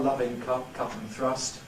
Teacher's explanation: Daniel Jones had a rather back quality 12D, loving cup, cut and thrust. Nowadays we have a more central vowel, loving cup, cut and thrust, and there are those who have a rather front one, loving cup, cut and thrust, which is perhaps a little bit Londony.